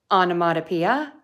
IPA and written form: ɑn ə mɔd ə pi ə (onomatopoeia)